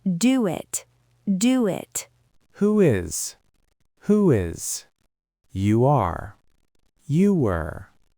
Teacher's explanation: If your lips are round, you get a W bridge. · Because your lips are rounded, as they open up, they naturally create a W sound.